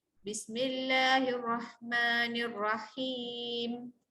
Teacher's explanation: Okay, Bismillahirrahmanirrahim. Okay, him, ha baris bawah, jumpa dengan ya adalah mad asli. Kemudian mim tu kita matikan disebabkan kita nak berhenti. Okay, kita baca him tu 2 harakat sama-sama. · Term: ma'arid sukun